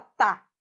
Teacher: a tua língua bate nos dentes da frente